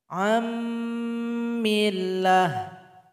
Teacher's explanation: dan yang terasa bunyinya adalah Nun yang kedua anak diakum kemudian nun sukun berjumpa dengan mim maka nun sukun sudah tergabung kepada huruf mim dan tidak terasa bunyinya lagi